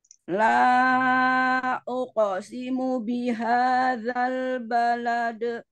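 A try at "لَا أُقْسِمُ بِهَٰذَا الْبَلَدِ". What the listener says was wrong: Kopnya naikin. La uqo. Kan dia kan istilah ya, berarti pangkal lidahnya naik. Uqo. Uqo.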